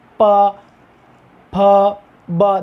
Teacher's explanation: दोनों होठ एक दूसरे को पूरी तरह से चूम रहे, यानी कि उन वर्णों के उच्चारण में स्पर्श कर रहे हैं, जबकि स्वरों में नहीं करते।